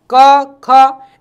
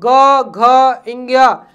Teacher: क ख। इनमें गला कम बजेगा और ग घ्या इसमें गला ज्यादा बजेगा